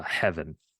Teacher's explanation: in many cases a v sound becomes uh labialized to just a ba sound right so V becomes ba